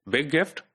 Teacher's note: point or like linking like in this phrase big gift when the G is linked within both of the syllables